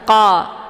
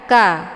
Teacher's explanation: Untuk bacaan qa ini ditebalkan karena dia posisinya adalah di pangkal lidah menempel di langit yang lunak. Jadi pangkal lidahnya terangkat ke langit yang lunak. Qa, ya, bukan ka, tapi qa, tebal.